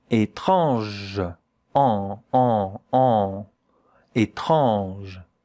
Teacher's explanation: So, you put your finger here and a bit of air has to come out of your nose when you say that word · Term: nasal vowel